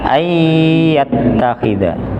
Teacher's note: Jadi idgham bi gunnah. Idgham itu berarti menghilangkan suara nunnya, tidak dibaca an. Ai langsung masuk ke ya, bi gunnah dengan didengungkan.